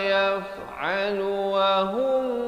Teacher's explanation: hum idhar syafawi jangan panjang, sempurna saja hum terus masuk